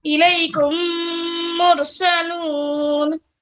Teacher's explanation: इलैकुम जो मीम साकिन का जो मीम है ना, उसको मैं क्या कर रही हूँ, गिरा दे रही हूँ और मुशद्दद मीम से कंटिन्यू करो। तो मीम साकिन के बाद मीम आए तो मीम को मीम से बदल कर गुन्ना करना है आपको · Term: इदगाम